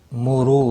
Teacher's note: را پیش کی وجہ سے پر پڑھا جائے گا، رو واو مدہ بھی ہے، ایک الف کے برابر کھینچ کر پڑھیں گے۔